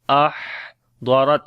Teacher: On the Ha we read Hams quality again, continuation of our breath. Ahdarat, Dwad and Ra we read in heavy sound, and on this Ta again Shiddat and Hams quality.